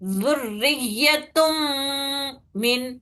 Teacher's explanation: تم جو کر رہے 2 حرکت غنہ کر رہی ہوں میں، اور وہ ناک سے نکال رہی ہوں 2 انگلیاں کھلے جتنے ٹائم تک. تو تنوین کے نون کو ملانا ہے میم میں کامل طریقے سے، بٹ 2 حرکت غنہ کرنا ہے.